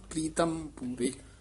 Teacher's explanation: ਹੇਠਾਂ ਰਾਰਾ ਲਾ ਕੇ ਉਚਾਰਨ ਕਰਨਾ ਪ੍ਰੀਤਮ ਰਾਰਾ ਪੂਰਾ ਨਹੀਂ ਬੋਲਣਾ